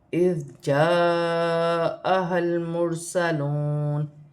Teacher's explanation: یہاں پر الف مدہ بن رہے ہیں، الف مدہ پر بڑی مد بھی ہے، مد متصل، اسے 5 الف کی مقدار کھینچ کر پڑھا جائے گا